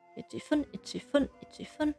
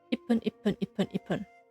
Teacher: If you say ichi-fun, you will realize that you will need to stop the airflow after the chi in order to pronounce the fun afterwards. It's far easier to say ipun, as this can be done in essentially one breath, for lack of a better phrase.